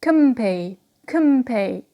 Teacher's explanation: So the n becomes m because of p.